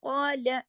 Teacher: قال، اب دیکھیے قاف کے ساتھ الف ہے، یہ یاد رکھیے، الف پورا پڑھنا ہے، قا آواز پوری نکالنی ہے، لیکن لا نہیں کرنا، لا اور لا فرق ہے نا۔ قال، قاف کو تو ہم نے 2 حرکات کھینچا